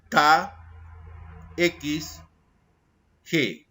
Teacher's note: Cuando se produce este desplazamiento del postdorsal de la lengua, o sea, de atrás, postdorsal de la lengua, hacia la zona velar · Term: Velares